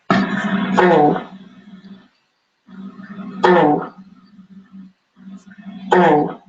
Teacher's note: we get rid of that slight oo sound at the end